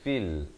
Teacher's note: Fa beri kasrah bunyi fi, bukannya bunyi fe. Jadi jangan baca fil, tapi baca fil.